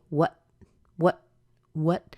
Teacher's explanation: the what there the what has a T at the end normally we would hold that T and say what what what but something kind of funny happens